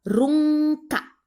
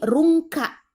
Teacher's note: Rungka itu ikhfa, jadi suara N disamarkan. Jadi bukan runka, tapi rungka.